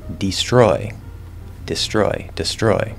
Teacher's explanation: just because it's a long e doesn't mean it can't be used in an unstressed syllable